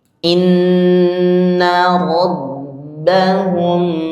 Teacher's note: Inna panjang, rabba ditekan, hum mim ketemu dengan ba. Itu panjang dua harokat. Namanya ikhfa syafawi.